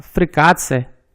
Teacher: E na palavra Frikatse, temos a sequência T, T, C, pronuncia apenas T, C